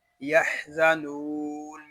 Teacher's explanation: یحزنون میں نون کو ہم کھینچ کر پڑھیں گے ایک الف تک کیونکہ یہاں واو مدہ ہو رہا ہے